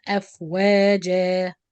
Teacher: waqfan is مد عوض حركتين and he pronounce it أفواجا, and waslan will be إخفاء with غنة.